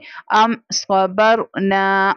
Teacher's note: रॉ साकिना है, उससे पहले प्रीवियस लेटर बा है, बा के ऊपर जबर है, इसलिए रॉ को पुर यानी मोटा करके पढ़ेंगे · यहाँ पर इजहार शफवी का कायदा हो रहा है, यानी बगैर गुन्ना के पढ़ेंगे।